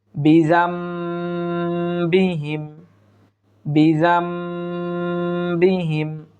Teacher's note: একটু এক আলিফ পরিমাণ গুন্না করে পড়ার চেষ্টা করব